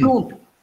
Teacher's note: We don't pronounce N. We, that N nasalizes the previous vowel oo.